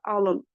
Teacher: alınmaq feili, burada alın, vurğu düşür ikinci hecaya. Bir var, insanın alnı, sözün elə köküdür, alın, vurğu düşür yenə ikinci hecanın üzərinə.